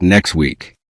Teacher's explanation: The word next ends with several consonant sounds. When it is followed by the W sound in weak, the final T may become difficult to notice. The phrase can sound like next week.